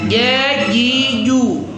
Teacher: tengah lidah kena langit-langit kan jim itu tengah lidah ya.